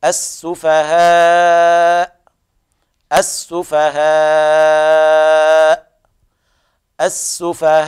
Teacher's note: نقرأ بأربع أو خمس أو ست حركات مع السكون المحض لأجل الوقف